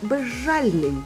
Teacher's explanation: Відбулося поглинання і маємо ж подовжений